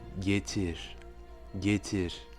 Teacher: On dira donc getir, getir. Vous voyez que le R est très légèrement roulé, même presque comme un léger sifflement